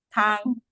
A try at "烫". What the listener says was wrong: Oh, tang nada 4.